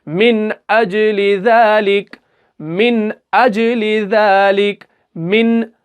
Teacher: नून को गुन्ना नहीं करना बल्कि बगैर गुन्ना के पढ़ना है, यानी इजहार करना है